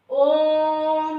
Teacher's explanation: इसको बोलने में 3 मात्रा का समय लगता है, जैसे ओम। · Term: प्लुत